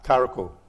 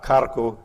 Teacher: the R in she oak must be a glide R, karaku, rather than a rolled R, karaku in the word for red.